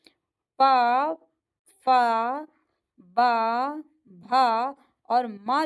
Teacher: प फ ब भ और म जो है ये ओष्ठ का उच्चारण होता है।